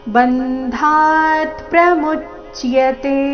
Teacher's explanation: ಮು ಮೇಲೆ ಆಘಾತ ಚಿಯ ಸಂಯುಕ್ತ ಅಕ್ಷರ ಮುಂದೆ ಬಂದ ಕಾರಣ